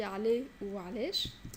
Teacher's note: Le 3, c'est un son qui est comme le A mais qui est plus fort, qui vient du fond de la gorge.